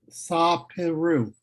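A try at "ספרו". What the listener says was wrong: Okay, it still sounds like those syllables are disconnected a little bit. Connect them a little bit more.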